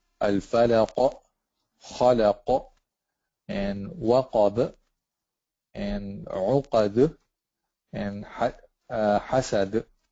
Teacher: So it's a small qalqala, it's not a huge one, but still you have to do it.